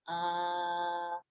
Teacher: So the unstressed vowels, any vowels happening over here, they're going to be reduced, and most often they're reduced to this phoneme over here, which is what we call the schwa, which is the middle central vowel in English